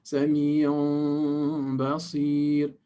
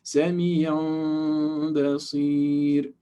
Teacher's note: the way to hide the meme is to make the sound, the lips, a little bit open. Don't completely close them, because then it will be a clear meme. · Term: hidden meme